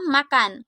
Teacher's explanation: Bunyi M dengan ciri-ciri hidup, nasal, bilabial